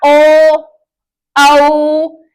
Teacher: हमारे जो होठ है वो पूरी तरह से गोल न होकर के आधे गोल होते हैं, उन्हें बोला जाता है अर्धवृत्ताकार स्वर।